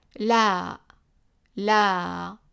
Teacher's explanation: The regular L is a French, similar to a French or Spanish L, with tongue contracted and touching roof of the mouth. Tongue contracted and touching roof of the mouth.